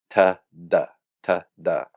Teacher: Dental consonants are produced with the tongue approaching the back of the top teeth. Ta and da, you'll notice your tongue is raising and hitting near the back of the teeth.